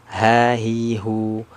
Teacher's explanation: ha hi hu dari mana makhrajnya keluarnya dari tenggorokan bagian bawah ha hi hu tenggorokan bagian bawah ya bersamaan dengan huruf hamzah